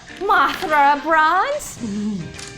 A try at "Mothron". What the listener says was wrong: Mothron. It's Mothron. Or Mothron.